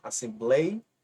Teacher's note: Observe que a sílaba mais forte é a penúltima Assembleia a e esse ditongo ele se encontra na paroxítona por